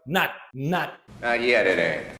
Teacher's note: you don't have to aspirate the T sound okay so it's just like you want to make it but then you just stop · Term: stop T